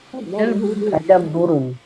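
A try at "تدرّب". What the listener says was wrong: Tadarru. Tadarrubun. Bedakan tadarroba dengan tadabbaro. Tadarroba dan tadabbaro. Isim masdarnya tadabbur dan tadarrub.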